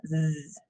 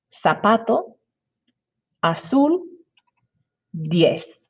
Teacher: In Latin American Spanish, the letter Z is like a snake hissing.